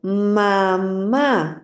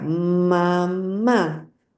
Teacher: Por ejemplo, en el sonido de la M, lo que ocurre es que hay una vibración, ¿ok? Hay una vibración en esa salida del aire por la nariz que se siente en las mejillas.